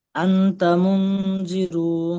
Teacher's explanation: নুন সাকিনের পরে হরফে ইকফার 15টি হরফের মধ্যে থেকে তা এসেছে, তাই নুন সাকিনকে একালিপ পরিমাণ গুণনা করে পড়তে হয়। একে ইকফা বলে।